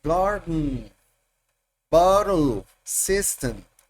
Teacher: En inglés está el acento garden y la otra como que desaparece el sonido vocal